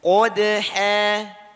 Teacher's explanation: Kalau terlalu kebuka, maka belum termasuk pelafazan fathah. Fathah itu hanya cuma sedikit dibuka. Qadha. Jadi kalau qadha ini tebal.